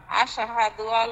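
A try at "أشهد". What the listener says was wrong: এই আসে হাদু আসে কলকলা হয়েছে কেন? আশহাদু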